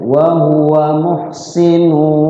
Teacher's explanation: cara bacanya dimasukkan tanwinnya ke wawu, di wawunya itu digunnah. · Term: idgham bigunnah